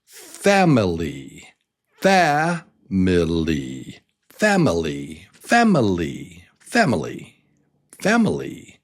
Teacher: And this word starts with the stress on the first syllable.